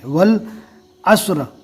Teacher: واو کو ڈائریکٹ لام سے ملائیں گے، الف کو چھوڑ دیں گے